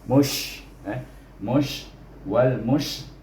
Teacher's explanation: Wal, wal. Kemudian mim baris depan bunyinya mu, dimati dengan huruf shin, iaitu kena ada hamas bunyinya